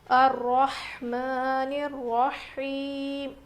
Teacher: ہا کی آواز بالکل ظاہر ہونی چاہیے، را موٹا پڑھیں گے